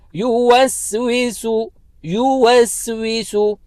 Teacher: جو دوسرا سین ہے اس کے اوپر بھی ضمہ ہے جس کو اردو میں پیش کہتے ہیں، اس کو بھی ایک ہی حرکت کی مقدار کھینچنا ہے